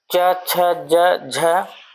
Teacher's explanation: च छ ज झ तालव्य ध्वनियां हैं